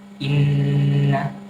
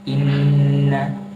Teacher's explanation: Nah, ketika membaca nun yang bertasydid ini, maka harus didengungkan. Dengung itu keluar di rongga hidung. Jadi ketika membaca inna, kalau ditutup itu maka tidak akan bisa membaca in tertahan. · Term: gunnah